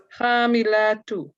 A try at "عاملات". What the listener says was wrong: not kha. Amilatun, khamilatun.